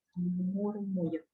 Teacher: murmullo, muy suave, murmullo, con la M, alargo la M, murmullo. Y voy bajando la intensidad.